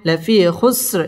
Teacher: জেরের বাম পাশে জজম ওয়ালা ইয়া মদের হরফ এক আলিফ টেনে পড়তে হবে